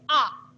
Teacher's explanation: विवृत वह है जिसमें मुख सर्वाधिक खुला रहता है जैसे आ पूरा मुह खुला है जिहा नीचे की और पूरी तरीके से गिरी हुई है इन